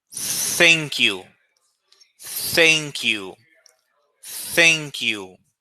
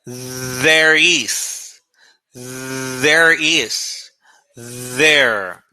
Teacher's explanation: Your tongue in between your teeth.